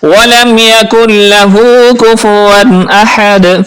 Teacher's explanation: الٹا پیش کو ہم ایک الف کے برابر کھینچتے بھی ہیں · احد پڑھنا ہے، اور دال پر قلقلہ بھی کرنا ہے۔